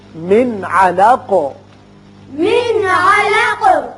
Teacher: نون ساکن کے بعد عین ہے جو حروف حلقی میں سے ہے، لہذا نون پر اظہار حلقی کیجیے